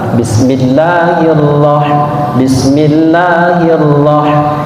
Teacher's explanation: karena huruf ra ini berbaris atas atau fathah, maka disebut dengan ra tebal atau tafhim. Maka sebutannya ataupun pengucapannya harus tebal. · huruf ra ini adalah huruf tebal antara o dan a.